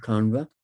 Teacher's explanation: And the same is true for the retroflex N, Kanva, book 8 of the Rig Veda, where we have retroflex N after A again